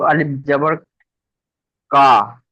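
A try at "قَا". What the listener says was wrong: না, এই যে অক্ষরটা আছে এটা কাফ নয়, ঠিক করে বলেন।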